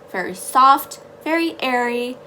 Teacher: For the parking, we're going to add a lot more air into it. We're going to instill a lot of air, and it's going to have a little bit of an H nature to it, which is exactly what we want.